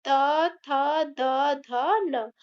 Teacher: त वर्ग का उच्चारण दंत से होता है।